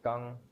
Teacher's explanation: the kang here is a running tone so it becomes it's a low flat